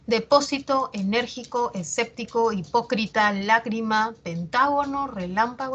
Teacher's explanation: esdrújulas también llamadas proparoxítonas a nivel prosódico o a nivel oral van a llevar la mayor fuerza de voz en la antepenúltima sílaba